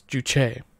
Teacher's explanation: it's showing the primary accent on the second syllable